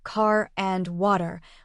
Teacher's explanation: For instance, in an American accent, the R sound is pronounced clearly in words like car and water, whereas in some other accents, it's softer or even silent.